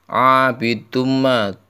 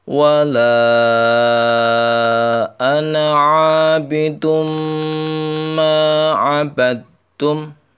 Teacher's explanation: duma itu harus berdengung. Kenapa berdengung? Karena bacaan idgham bi gunnah.